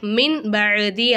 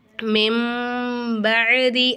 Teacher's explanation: நூனே சாக்கினுக்கு அடுத்ததா பா வந்திருக்கு. பா வந்து இக்லாபுடைய எழுத்து. அப்போ நம்ம நூனே சாக்கின் என்னமா செய்யணும்? மீமா மாற்றி உச்சரிக்கணும். மின் பஅதி அப்படின்னு சொல்லாமல் மெம்பதி அப்படின்னு சொல்லணும். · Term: இக்லாபுடைய சட்டம்